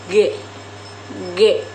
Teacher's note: Huruf G dibentuk dengan menggunakan lidah dan langit-langit mulut serta menghasilkan suara yang bersuara atau disebut letup velar